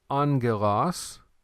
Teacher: By the way, on this word angelos, this is alpha, gamma, gamma. When you have these two gammas right there together, it's not GG, but it's pronounced NG.